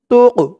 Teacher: এই কফটা হচ্ছে কলকলার হরফ, ধাক্কা দিয়ে পড়তে হবে